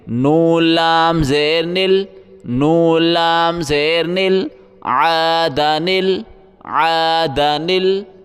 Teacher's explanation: اب اس چھوٹے نون کو اس لام کے ساتھ ملائیں گے، لام کے اوپر جزم ہے، جزم ملانے کے لیے ہوتا ہے، بیچ میں دو الف ہیں، یہ الف نہیں پڑھے جائیں گے، نون کو ہم لام کے ساتھ ملائیں گے